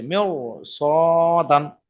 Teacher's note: র সাকিনের আগে জের হওয়া সত্ত্বেও সেই র সাকিনটি পুর হবে, অর্থাৎ মুখ গোল হবে।